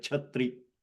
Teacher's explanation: And CH is mahaprana, cha. Okay, like chatri.